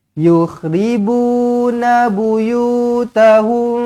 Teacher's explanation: mim kosong bertemu ba Ikhfa Syafawi dengungkan dua harakat